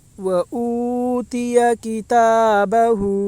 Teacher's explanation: پڑھیں تھوڑا بھی نہ کھینچیں، ہا کے اوپر الٹا پیش ہے، الٹا پیش برابر ہوتا ہے واو مدہ کے، اس لیے الٹا پیش کو ایک الف کے برابر کھینچ کر پڑھیں